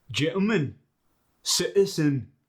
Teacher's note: Whenever you get the T sound, it becomes like an sound. You're in a sense just eliminating the T. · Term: glottal stop